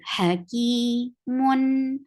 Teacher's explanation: Ha should be from your throat. The sound is short.